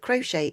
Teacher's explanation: we've got the CH is sound of a sh, and we've got a silent T. So the sh is to help keep it a secret because it was a secret game, and also letting you know that the T is a silent T.